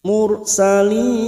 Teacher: Ra sukun yang didahului dhammah. Baca tafkhim atau tebal. Salin mat arid di sukun 4 harokat kita panjangkan.